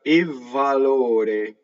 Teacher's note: notice I'm exaggerating the double V, but there's a slight double V there, right? Valore.